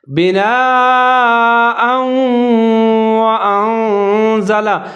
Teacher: واو کے اوپر شد ہے، مشدد ہے، تو یہاں آپ نے غنہ کرنا ہے ، ادغام ہو رہا ہے، بناء وانزل، حمزہ کے اوپر زبر